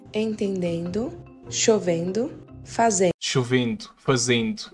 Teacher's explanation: Quando alguns paulistanos pronunciam a vogal nasal em, eles acabam adicionando uma outra vogal, no caso i. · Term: ditongação de vogais nasais